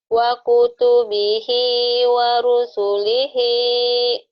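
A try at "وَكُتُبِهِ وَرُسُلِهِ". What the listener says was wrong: Waro. Wa kutubihi warusu. Bukan warosu, warusu lagi.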